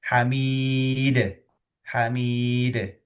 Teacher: Dal sukun. Nah sukun nanti muncul sifat qalqalah atau memantul gitu kan ya